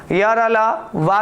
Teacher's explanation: अंतस्थ व्यंजन वर्ण वह वर्ण होते हैं, ठीक है, जो मुख्य रूप से हमारा जब उच्चारण हम लोग जब करते हैं तो मुख के अलग अलग हिस्सों से हल्का सा स्पर्श करते, पूर्ण रूप से स्पर्श नहीं करते